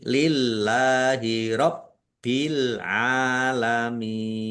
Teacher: Lillahi Allahnya dibaca tipis karena harakat di depannya kasrah.